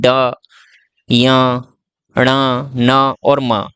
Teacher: नाक से भी आवाज टकरा के बाहर आती है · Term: नासिक्य व्यंजन